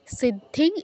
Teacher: বলতে এটা হচ্ছে নিয়মটা হচ্ছে আমাদের 29 টা অক্ষরের বাইরে থাকলে অনুস্বারের যেই নিজস্ব নাসিক্য ধ্বনি সেটা উচ্চারণ করতে হয়